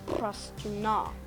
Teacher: For this language, I'm just going to make stress on the last syllable, so it'll be Prastuna. So ultimate stress just means it's on the last syllable.